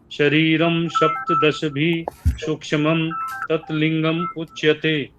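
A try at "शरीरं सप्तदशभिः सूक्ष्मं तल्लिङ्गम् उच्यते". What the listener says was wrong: बहुत अच्छा।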